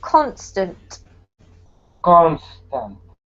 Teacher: has the emphasis on the first syllable